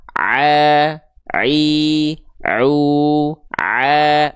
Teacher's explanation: ketika teman-teman melafakkan ain dari tengah tenggorokan ini suaranya semuanya masuk ke rongga mulut sampai keluar mulut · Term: huruf ain